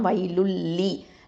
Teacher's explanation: இந்த தன்மீனுக்கு அடுத்ததான் லாம் வந்திருக்கிறதுனால நம்ம இதுகாம் பிலா குன்னா, இல்லைனா இதுகாம் பிகைரி குன்னா அப்படின்னு சொல்லுவோம். அதாவது குன்னாவே இல்லாமல் இணைச்சிடணும், இதுகாம் செஞ்சிடணும். அப்போ வைலுல்லி அப்படின்னு இணைஞ்சிரும்.